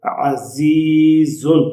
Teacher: اس زا پہ بھی اور اس زا پہ بھی سیٹی کی آواز ہے، یہ حروف صفیریہ ہے